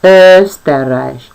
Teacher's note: Türkai. O umlauts tiek izrunāts kā Ö, un tā ir skaņa starp O un E.